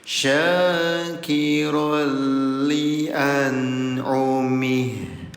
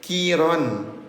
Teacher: Ketika tanwin atau fathah tain bertemu dengan huruf lam bertasdid, ya, bunyi ro-nya yang asalnya dibaca tanwin ayah bunda kiron, ya, maka bunyi tanwinnya sekarang dileburkan ke huruf lam. Itu yang dinamakan dengan idgham. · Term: idgham bila gunah